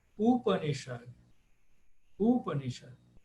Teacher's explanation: Aí a quarta, de trás para frente, que é acentuada, porque todas aí são breves. Então, quando todas são breves, aí vou lá para o final.